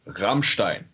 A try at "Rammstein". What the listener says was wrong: It's like in the throat more.